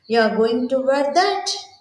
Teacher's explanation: You're going to wear that? That is, the falling intonation you are observing here sounds more like a judgment or criticism of the person's clothing choice.